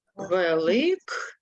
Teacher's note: перед дзвінким приголосним Ми чуємо Ґ а пишемо глухий приголосний к